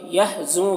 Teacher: یحزو کا نون میں اخفا ہوگا، نون کی آواز کو ناک میں چھپا کر پڑھیں گے